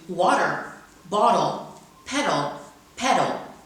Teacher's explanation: The third thing you must keep in mind about phonemes t and d is that in American English, they are often pronounced as voiced flap